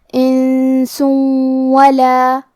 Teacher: آخری میں سین پہ تنوین پیش ہے پھر حرف الواو ہے. کلمت ولا، واو حروف الادغام بغنہ میں سے ہے تو ہم یہ حکم کو غنہ اور تشدید کے ساتھ ادا کریں گے.